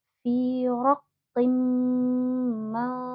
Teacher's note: Raqim, nah ada kasroh tanwin lagi bertemu huruf mim, yang mana hukum idgham bigunnah kita harus dengungkan dulu bacanya.